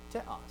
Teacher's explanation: when they would pronounce it fast, you wouldn't oftentimes even hear that ha aspiration